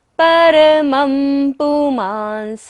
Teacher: प फ ब भ म यदि बिंदी के बाद आता है तो बिंदी का उच्चारण क्या होता है, म